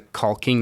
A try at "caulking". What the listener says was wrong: You really overpronounced that L.